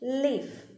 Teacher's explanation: the air passes through the sides of the tongue without any friction. അവിടെ friction ഉണ്ടാകുന്നില്ല.